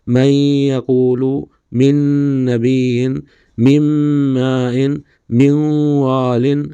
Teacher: یہ ادغام لام اور را کی صورت میں بغیر غنہ ہوگا، جیسے من ربہم، من لدنک. اور یا، نون، میم اور واو میں غنہ کے ساتھ ہوگا